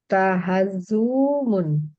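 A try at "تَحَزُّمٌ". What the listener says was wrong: pendek, pendek. Iya, dhammah tapi pendek. Pendek. Tahazzumun. tahazzumun. Nggak ada wawunya. Pendek. Tahazzumun. Nggak boleh panjang.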